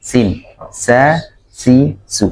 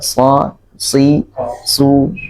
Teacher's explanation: Kalau sin tipis ya, sin, sa, si, su. Kalau so ditebalkan dikit, nah itu sudah berbeda ya, ditebalkan sedikit dan apa, ada nafas yang mengalir juga, maka itu insya Allah sudah pas huruf so-nya ya, so gitu ya.